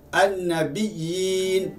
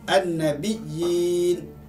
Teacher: Manakala huruf ya yang kedua berbaris sukun, iaitu mat. Dibaca dengan kadar 2 harakat sahaja. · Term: mat tamkin